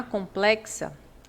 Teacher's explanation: quando você pronuncia complexa, o X, ele tem som de KS. É como se você escrevesse com, né, porque esse M, ó, nasaliza o O com complexa.